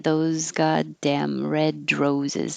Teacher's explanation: The D kind of connects to the R because you don't stop. Red roses can connect.